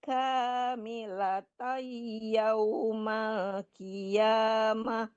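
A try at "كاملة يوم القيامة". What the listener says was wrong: Qafnya ditebalkan lagi. Coba ulang dari kamilatai.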